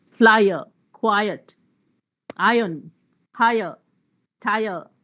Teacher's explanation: you have is an eye one vowel and then by your there is no consonant there it's three vowel sounds one after the other